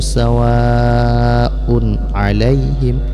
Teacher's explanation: Tanwin bertemu dengan ain, ini hukum bacaannya izhar, jadi cukup jelas dibaca tanwinnya, jangan didengungkan kemudian langsung kepada huruf ain